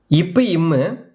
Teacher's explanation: மேல் இதலும் கீழ் இதலும் பொருந்துவதால் பிறக்கும் மெய்யெழுத்துக்கள்